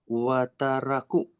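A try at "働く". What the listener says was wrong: kalau di depan itu nggak pernah wa bacanya.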